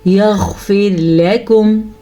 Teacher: را باریک پڑھیں گے کیونکہ را ساکن سے پیچھے زیر ہے